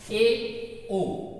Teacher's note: ए ओ इनको अर्ध संवृत्त कहा जाता है। मुख संवृत्त से थोड़ा सा ज्यादा खुलेगा, अर्ध संवृत्त कहेंगे।